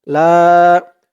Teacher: লা এক আলিফ টান জবরের পরে খালি আলিফ